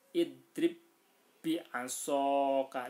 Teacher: ba sukun bertemu dengan ba. Nah, maka dibaca idrib bi asoka. Cara membacanya ditasdidkan. Nah, ini namanya idgham mutamatsilan karena ba sukun bertemu dengan ba.